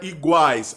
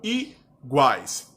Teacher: a vogal a acompanhada de duas semivogais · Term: tritongo